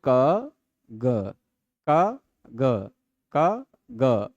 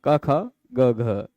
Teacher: क ख में जो वो गूंज नहीं होती वही अघोष है। और ग घ में जो हो रही वो घोष है।